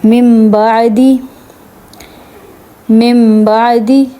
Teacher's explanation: نون ساکن کے بعد با ہے تو اس کو میم میں کنورٹ کر دیں گے نون کو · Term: اقلاب